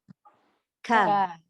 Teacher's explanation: pangkal lidah sentuh antara lelangit lembut dan lelangit keras. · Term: Kaf